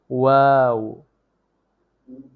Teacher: দুই ঠোঁট গোল করে সামান্য খোলা রেখে উচ্চারিত হয়